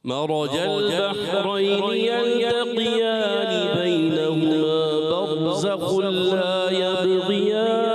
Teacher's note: फिर यबग़ियान गैन मोटा करना है।